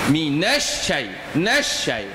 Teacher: Nun tu baris di atas minas. Syin yang pertama mesti syin mati. Shin yang kedua baru syin hidup. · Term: huruf yang bersabdu